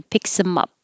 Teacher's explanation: you can make it shorter by taking off the th